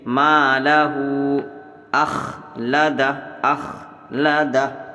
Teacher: ہا الٹا پیش ہو اور اس کے اوپر چھوٹی سی مد ہے، اس کو بھی کھینچیں گے